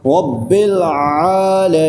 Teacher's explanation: حلق کے درمیانی حصے سے ادا ہوتا ہے۔ زبان کی جڑ کو ہم حلق کی طرف دباتے ہوئے پڑھیں گے، عین ایسی آواز آئے گی، رب العالمین۔